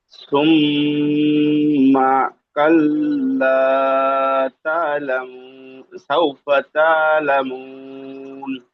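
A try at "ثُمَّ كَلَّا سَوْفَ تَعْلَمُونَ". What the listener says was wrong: মাশাআল্লাহ, ঠিক আছে ভাই।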